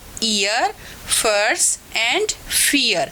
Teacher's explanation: A glide from A centralise front अनराउंडेड vowel just about half close to A central अनराउंडेड vowel just below half open position. देखिए कहाँ से start हुई, centralise front अनराउंडेड vowel, ये है हमारा centralise front अनराउंडेड vowel just about half close, just about यहाँ पे ये हाफ क्लोज के ऊपर।